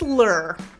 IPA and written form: lər (LAR)